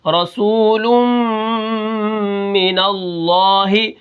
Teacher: نون کو لام کے ساتھ میں نے ملا کے پڑھا، لام کے اوپر تشدید ہے، پھر میں نے تشدید کو اس کی حرکت کے موافق، اس کے اوپر کھڑا زبر ہے تو میں نے اس کو ایک الف کے برابر کھینچ کے پڑھا، رسول من اللہ، ہا زیر ہی۔